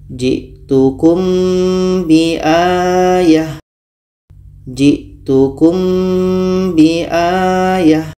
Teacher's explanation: mim mati bertemu ba ah ini kita baca samar dan dengung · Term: Ikhfa Syafawi, ikhfa syafawi